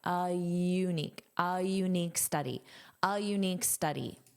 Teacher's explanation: Notice you use a little bit of a y glide